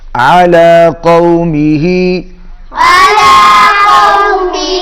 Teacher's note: عین بھی حلق میں سے ادا کریں گے، قاف بھی حلق میں سے ادا کریں گے